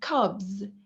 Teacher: But in case we have a voiced consonant like cubs, here the S turns to be voiced consonant, so it turns to be the Z consonant sound in order to agree with the preceding vowel sound.